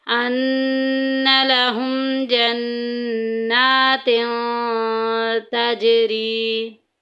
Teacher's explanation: मीम साकिन के बाद जीम आ गया, तो जीम इजहार शफवी के कायदों में से है। यहाँ हमने ज़ाहिर करके पढ़ना है।